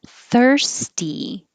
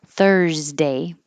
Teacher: And this S sounds like an S, thirsty, followed by a voiceless T. This S sounds like a Z, followed by a voiced D.